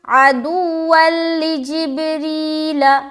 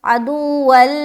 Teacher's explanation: इदगाम नाकिस नहीं होता, बल्कि इदगाम ताम होता है, जो कि गुन्ना के बगैर होता है। तो यहाँ पर गुन्ना के बगैर सिर्फ मिलाएंगे, यानी कि जल्द मिलाकर निकल जाना है, रुकावट बिल्कुल नहीं करनी